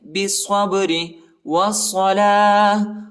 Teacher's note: آخر میں با کو جھٹکا دینا ہے، ٹھیک ہے، کیونکہ با جو ہے حروف قلقلہ کا حرف ہے